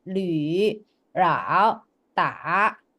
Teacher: Sedangkan nada 3 itu kamu harus ke bawah. Kayak ngebas gitu loh suaranya.